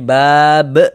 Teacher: dibaca bab ah maka ba ditambah b menjadi bab nah mad thabiinya bertemu dengan huruf yang kita sukunkan berubah menjadi mad arid sukun